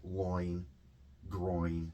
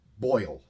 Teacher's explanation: it's actually a long O followed by a long E in sound, even though it's O-I.